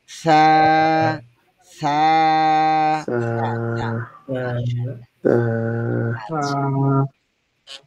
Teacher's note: জিহ্বার আগা উপরের দাঁতের আগাতে স্পর্শ হবে এবং যত নরম করা যায়, ভিতর থেকে বাতাস তো অবশ্যই আসবে